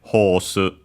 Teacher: with the long vowel because there isn't R in Japanese and so we have the long vowel like in receive pronunciation in English horse